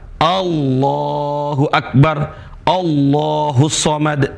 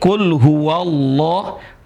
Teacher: A-nya nggak dibaca kul huwa Allah. Dan ini namanya hamzah wasol. Dan dia tidak berharokat.